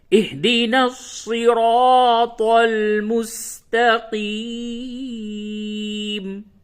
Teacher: صاد اور طا اسے موٹی آواز سے یعنی پر کر کے پڑھیں گے